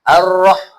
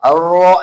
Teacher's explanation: rnya itu jangan terlalu ada rintiknya